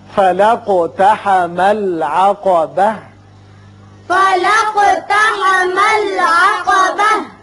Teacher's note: وقف کی صورت میں تا ساکن ہو کر ہا بن جائے گی.